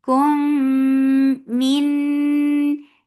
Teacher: So, and this idgham is with gunna akmal. So, keep the sound in your nose for a longer time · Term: idgham with gunna